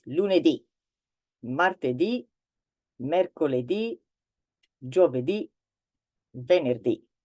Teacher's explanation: so the stress on the word is on the very last syllable.